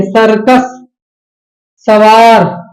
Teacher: सा का उच्चारण जो होता है दांत से, मतलब आपका जीभ जो है दांत को टच करेगा, है ना, इसीलिए इसको क्या बोला जाता है, दंसा, दंसा, है ना, दंसा, इस तरह से बोला जाता है, इसलिए दंत सकार लिखा हुआ है यहाँ, ठीक है।